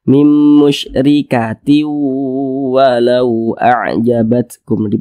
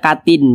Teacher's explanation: Maka tanwin berjumpa dengan huruf waw hukumnya adalah idgham bi gunnah. Maka tanwinnya dimasukkan ke huruf waw disertai dengan gunnah, disertai dengan dengungan.